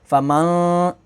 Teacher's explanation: अब यहाँ पर नून साकिन के बाद अगला लेटर ता है, ता हरूफ़ इख्फ़ा में से तो यहाँ पर गुन्ना करेंगे, यानी नून साकिन की आवाज़ जो है वो नाक में जाएगी। फ़मं, इस तरीके से मन नहीं पढ़ेंगे।